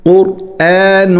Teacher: قاف را دونوں موٹے ہونے چاہیے اور حمزہ جو ہے وہ باریک ہونا چاہیے اور نون پر اخفا ہوگا